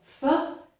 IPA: θ